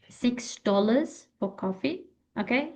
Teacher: The voice shouldn't be flat, shouldn't be flat. We need to rise our voice, okay? And then down. When we want to stress, emphasize a word, we need to raise our voice. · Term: intonation